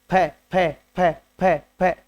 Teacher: फ बोलेंगे, ओष्ठ मिलते हैं। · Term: ओष्ठ वर्ण